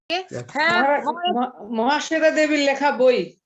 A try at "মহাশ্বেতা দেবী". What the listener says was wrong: মহাশ্বেতা দেবী, মহাশ্বেতা, মহাশিবা নয়, মহাশ্বেতা দেবীর হ্যাঁ, মানে উচ্চারণে একটু গন্ডগোল হয়ে গেল।